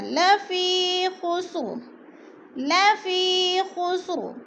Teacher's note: یا مدہ کو ایک الف کے برابر کھینچ کر پڑھنا ہے۔ یا ساکن سے پہلے فا کے نیچے زیر ہے تو یا مدہ۔